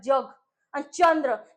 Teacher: च, छ, ज, झ उच्चारत असताना थोडे दाताकडे जात असतील तर त्यांना दंत तालव्य सुद्धा म्हणतात.